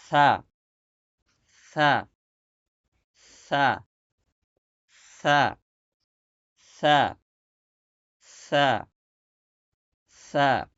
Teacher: জিহ্বার আগা সামনের উপরের দুই দাঁতের আগার সঙ্গে লাগান।